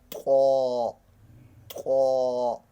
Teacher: زبان اوپر تالو کے ساتھ سخت جگہ میں لگے گی اور زبان پھسل جائے گی، طا، طا، یاد رکھ لیں، طا، موٹے حروفوں میں طا۔